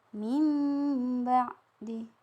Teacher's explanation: huruf nun sukun atau tanwin itu bertemu dengan huruf ba ini, maka hurufnya ditukar menjadi huruf mim. Jadi misalnya kan kalau tulisan mim ba'di itu kan tulisannya min ba'di, tapi karena di situ huruf sukun, jadi dibaca mim. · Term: iqlab